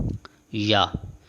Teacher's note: زبان کا درمیان والا حصہ اوپر والے تالو سے لگے تو یہ ادا ہوگا یا